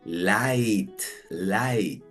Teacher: la primer sílaba termina en vocal y es con el sonido abierto de la i